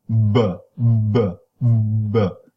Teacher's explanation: even before you open your lips with it your vocal folds are vibrating